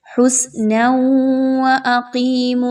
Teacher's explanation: تنوین کی آواز کو واو کی آواز کے ساتھ مرج کرنا ہے، ملا دینا ہے غنہ کرتے ہوئے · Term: ادغام مع الغنہ